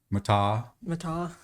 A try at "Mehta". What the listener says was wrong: Meta. You have to pronounce the H.